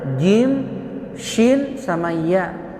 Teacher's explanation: Jim keluarnya dari tengah-tengah lidah